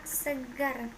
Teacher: Konsonan R, kriterianya bunyi apicoalveolar getar bersuara